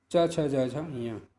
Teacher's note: च वर्ग अर्थात च छ ज झ ञ, इनका तालु स्थान होता है।